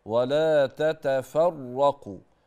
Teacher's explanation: الراء المشدده التكرير فيها ممنوع